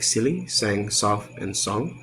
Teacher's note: S is voiceless alveolar fricative, like silly, sang, soft, and song.